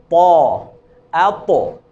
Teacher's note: البتہ طا کی ادائیگی میں زبان کا پچھلا حصہ، یہ دیکھیں، زبان کا اگلا حصہ سامنے والے دانتوں کی جڑوں میں لگے گا، اور یہ زبان کا پچھلا حصہ اوپر کو اٹھے گا طا کی ادائیگی میں، اور طا کو پر کر کے اور موٹا کر کے ادا کرتے ہیں